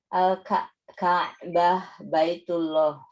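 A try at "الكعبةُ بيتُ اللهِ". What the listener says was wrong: Nah, Kalau di bahasa Arab harus di ini ya, harus disebutin AIU-nya. Al-Ka'batu Baitullahi. Al-Ka'batu Baitullahi.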